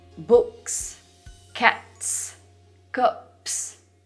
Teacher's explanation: in these examples s is following another voiceless consonant and thus stays voiceless too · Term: voiceless s